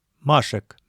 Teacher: безударная э произносится как нейтральные гласные шва